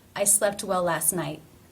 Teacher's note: the T here is the end of the word not part of a consonant cluster it is a stop